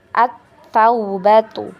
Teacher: huruf alif lam bertemu dengan huruf ta ya. Langsung masuk ke huruf ta ya, atau melebur ke huruf ta.